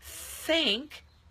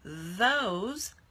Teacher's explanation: first one is off and then for the second sound so when we say think no motor but when we say those motor went on